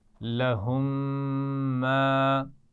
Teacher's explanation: میم ساکن کے بعد پھر میم آ گیا تو وہاں پر غنہ کر رہے ہیں ہم